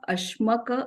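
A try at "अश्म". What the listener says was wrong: ashma, not ashmak, it's ashma.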